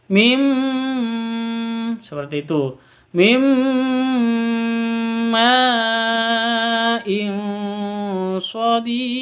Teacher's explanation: nun mati bertemu dengan mim. Cara bacanya masuk ke mim. Mim seperti itu, masuk ke mim disertai dengung 2 ketuk.